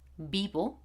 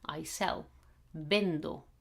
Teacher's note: I'm pronouncing this V pretty much like a bee